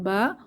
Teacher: বা ঠোঁটের ভেজা জায়গা থেকে